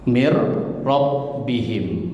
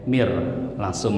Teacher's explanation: Nun pun ketemu huruf ro ini nunnya melebur ke ro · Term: Idam bila gunah